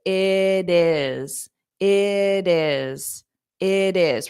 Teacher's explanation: this T in the it sounds like a soft D but again I have to connect it